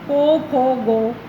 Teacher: हमारे व्यंजन क ख ग घ को बंगाल में को खो गो इस प्रकार से बोला जाता है